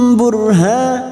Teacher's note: rok sukun yang sebelumnya dumah kita baca tafkim atau tebal. Burhanum, burhanum, ha fathah diikuti alif 2 harokat.